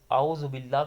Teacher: حمزہ یہ نکالنا ہے سینے کے ادھر سے، اور عین نکالنا ہے حلق کے درمیان سے، ان میں فرق کرنا ہے۔